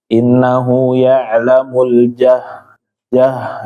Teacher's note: bacaannya terlalu ke depan tempat makhrajnya. Jadi ada c-nya. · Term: huruf jim